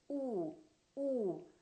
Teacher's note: the ooh sound the lips are rounded